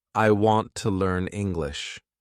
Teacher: Now say it again, but put stress on want.